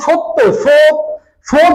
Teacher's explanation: হচ্ছে শক্ত তালুর কাছে উঠে যাচ্ছে উঁচু হয়ে যাচ্ছে। আর যখনই আপনি হচ্ছে সত্য পাশে ত আছে তো দন্ত ধ্বনি আছে। এইজন্য স উচ্চারণ করার পরেই কিন্তু জিহ্বাটা দাঁতের কাছে চলে আসছে।